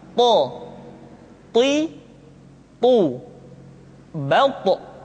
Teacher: ketika to diucapkan, suara kita terdengar menebal · To diucapkan dengan menyentuhkan ujung lidah dengan gusi-gusi dua gigi seri bagian atas. Sifat yang dimiliki oleh huruf to yang mesti nampak ketika kita ucapkan adalah sifat al-isti'la dan sifat al-itbaq.